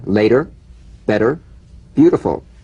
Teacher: the medial T becomes a soft D all right it's not a complete D but it goes toward